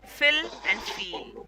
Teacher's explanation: ये double E है तो डबल वावल साउंड है. तो डबल वावल साउंड आ जाता है तो लॉन्गर प्रोनाउंसिएशन आता है. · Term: longer vowel sounds